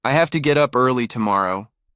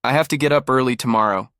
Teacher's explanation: The have to became hafta. The two shrank into tea. The sentence became lighter.